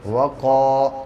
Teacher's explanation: الف سے پہلے قاف کے اوپر زبر ہے اس لیے الف مدہ ہوگا اور اس کو تھوڑا سا کھینچ کے پڑھتے ہیں. جیسے واو زبر وا کو ایک دم نہیں کھینچیں گے اور قاف الف زبر کا کو تھوڑا سا کھینچیں گے